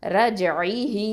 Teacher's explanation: அடுத்ததான் ஐன் கெஸ்ரா ஐ, ஹ கெஸ்ரா யா சகைரா ஹீ. இது வந்து யாவுல் மத்து 2 அலிஃப் நீட்டணும்